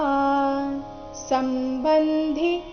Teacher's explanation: ಸಂಬಂಧಿ ಧಿ ಮಹಾಪ್ರಾಣ ರಸ್ವ